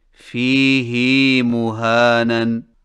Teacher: فیہ مہانن میں فیہ کی ہا کو کچھ کھینچ کر پڑھیں، یعنی اس طرح فیہ مہانن.